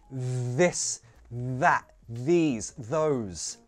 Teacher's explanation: words like this, that, these, those produce a vibration on the th sound, that's called a voiced th sound